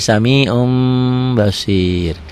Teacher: ditulisnya ada unsur n-nya dibacanya n-nya hilang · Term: iqlab